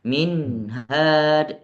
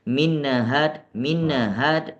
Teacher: Nun sendiri mempunyai sifat tawassud atau bainiah maka kita membacanya satu harakat minhad ditahan satu harakat dan juga di dalam kalimat yang kedua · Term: izhar